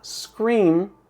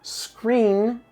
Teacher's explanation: se você não tem o controle dessa pronúncia e você fala o voiced alveolar nasal, ou seja, o N, em vez de falar scream, grito, gritar, você vai falar screen